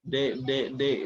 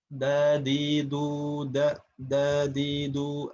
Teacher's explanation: Sedangkan huruf da ini dia di tempat tumbuh gigi seri. Sehingga tentu terdengarnya dari suara pun akan berbeda.